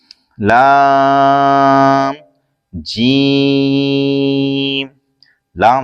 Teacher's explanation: जबान का किनारा और जवाहिक से सनाया तक के मसूड़ों से अदा होता है।